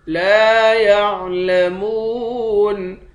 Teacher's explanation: لام کے بعد الف ہے، الف حروف مدہ ہے، ایک الف کے مقدار کھینچیں گے، میم کے بعد واو ہے، واو حروف مدہ ہے، ایک الف کے مقدار کھینچ کر پڑھیں گے، آخر میں نون ساکن ہے۔